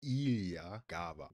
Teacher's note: with stress on the first syllables of both words